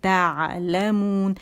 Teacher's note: عین کے مخرج پہ جائیں گے، عین کا مخرج کہاں ہے؟ وسط الحلق